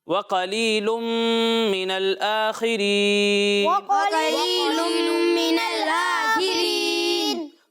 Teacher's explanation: اچھا یہاں پر بھی آپ دیکھیں قاف لکھا ہوا ہے تو قاف کو پر پڑھنا ہے، ٹھیک ہے. اور یہاں ادغام کا قاعدہ ہو رہا ہے تو یہاں غنہ کرنا ہے اور خا کو بھی پر پڑھنا ہے